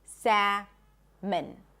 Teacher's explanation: make sure it's 2 syllables, salmon. Schwa at the end, salmon. · So we do not pronounce the L in English.